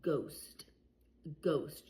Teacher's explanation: You don't hear an h sound. You just hear the g sound.